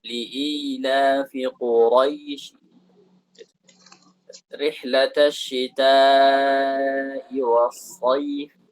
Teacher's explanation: Nah, kalau kita waqaf pakai raum, maka tidak ada mad di sana.